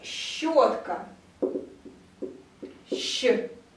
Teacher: обращу внимание на то, что Щ – это долгий Ш